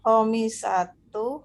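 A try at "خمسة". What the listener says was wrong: Khomsatu ya, mimnya sukun.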